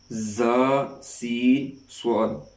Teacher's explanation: ان کو ادا کرتے وقت سیٹی کی آواز نکلتی ہے